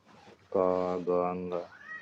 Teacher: अल्प प्राण, इसमें थोड़ी मात्रा में वायु निकलती है।